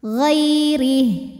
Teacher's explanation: Huruf ra dibunyikan secara tarqiq sebab ra-nya berbaris di bawah yaitu kasrah. Maka dibacanya tipis, pangkal lidah kita tidak perlu naik. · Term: tarqik